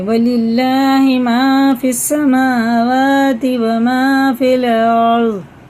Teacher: اب یہ اللہ کا لام زیر کے ساتھ ہے، باریک پڑھیں گے